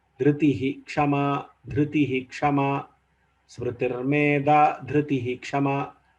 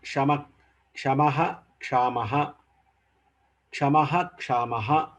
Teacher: Full Visarga has to be pronounced. This is because of the presence of Ksha.